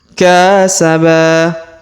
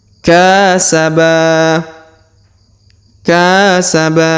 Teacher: Huruf ka kita panjangkan 2 harokat karena di depannya terdapat alif.